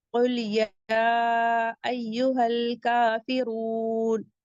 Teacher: کافرون، کاف پہ فتحہ مستقیمہ ہے، مد حکمی 2 کاؤنٹ پڑھیں گے. فا کو جلدی پڑھیں گے، را کو بھی ہیوی پڑھیں گے کیونکہ را پہ ضمہ ہے